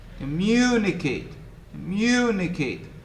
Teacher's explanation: The second syllable is stressed.